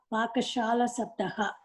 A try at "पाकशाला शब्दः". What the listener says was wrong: Pakashala Shabdaha, not Pakashala.